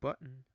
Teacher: Glottilized T as in button appears the most in British English.